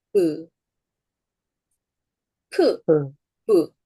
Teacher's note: 똑같은 조음점으로 입술을 움직여서 발음하지만 차이는 뭐냐? 이 두 개의 변별적 차이는 뭐냐면 프는 무성음이고 부는 유성음이라는 거죠.